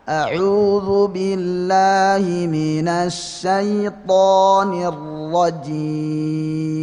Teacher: kalimat ar-rajim itu mat arid sukun memang bisa panjang sampai 6 harokat ya. Itu dalam kondisi waqaf tentu ya.